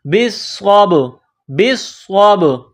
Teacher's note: صاد کو با کے ساتھ ملائیں گے، با ساکن ہے تو یہاں قلقلہ کریں گے